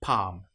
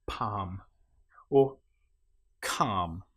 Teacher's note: In this case, the L you will notice is not pronounced at all.